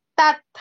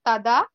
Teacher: ద first త ఇస్ అల్ప ప్రాణ ద second letter థ is మహాప్రాణ తథ it is not తద త థ త థ ఓకే త్రిమాత్రా